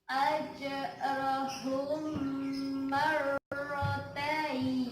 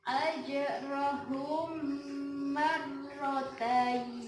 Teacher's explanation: Idgham mimi adalah tajwid yang ada di dalam Al-Quran apabila ada huruf mim sukun atau mati yang bertemu dengan huruf mim. Cara membacanya yaitu mendengung.